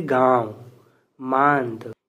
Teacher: यह जो है ना नाक और मुंह की सहायता से उच्चारण होता है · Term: अनुनासिक